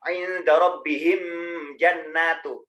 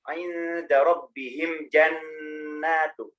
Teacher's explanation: Yang dengung di nunnya bukan di mimnya.